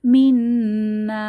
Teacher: নুনের উপরে তাসদিদ ওয়াজিব গুন্নাহ এবং তিন আলিফ টান হবে